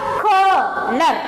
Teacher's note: So we want to stress the CO.